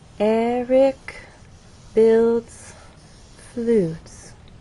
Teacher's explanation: there is still a change of pitch because there is word stress, but the overall pattern is falling intonation. So as not to confuse you with all of this up and down, I'm simply going to draw that straight line and then show how our voice falls at the end of the statement on flutes. · Eric stresses on the first syllable, builds as one syllable, and flutes receives our main stress.